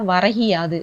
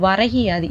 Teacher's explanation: அது முழுமையாக ஒரு மாத்திரை அளவில் ஒலிக்காமல் அரை மாத்திரை அளவாக ஒலிக்கிறது. அந்த கூ அப்படிங்கிற கீயா மாறி அரை மாத்திரை அளவாக ஒலிக்குது. இது தன் ஒரு மாத்திரை அளவிலிருந்து குறுகி ஒலிக்க ஈகரம் வந்து குற்றியலிகரம்.